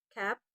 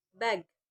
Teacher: K is a voiceless velar plosive. G is voice velar plosive. Both are produced by the back of the tongue, touching the soft palate.